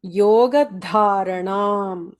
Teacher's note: yoga dha should be mahaprana, otherwise the meaning will change